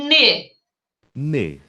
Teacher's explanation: N, ele é vozeado, tem vibração de pregas vocais, e ele é nasal, o mecanismo velofaríngeo não está ativado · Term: som nasal